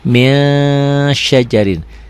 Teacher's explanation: Bukan hanya n ditambah g aja, ditahan juga, ada ditahan. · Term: ikhfa